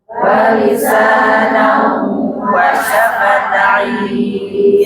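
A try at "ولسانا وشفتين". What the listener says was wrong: Gunnah, tanwin menghadapi huruf waw. Wa lisanan, langsung monyong gunnahnya, monyong. Suara bagi 2 Bu, bagi 2. Hidung, mulut ngalir. Wa lisanan Nah, bagi dua. Ya, jangan di mulut saja. Wa lisanau. Nah, itu mulut saja, tanpa masuk hidung. Harus masuk hidung. Wa lisanau wa syafatain.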